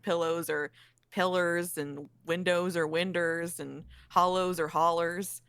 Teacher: just putting ER at the end of things for no reason